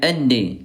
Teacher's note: Huruf dal dia syiddah dia kuat dan qalqalah mantul ya